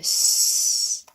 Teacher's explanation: That's an unvoiced sound. The vocal cords are not vibrating when you go s.